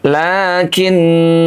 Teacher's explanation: Cara yang kedua, ketika kita berwakaf pada huruf yang bertanda bulat lonjong, maka huruf tersebut dianggap ada. Contoh, kalau kita berwakaf pada kalimat lakinna, maka kalimat lakinna itu menjadi panjang 2 harokat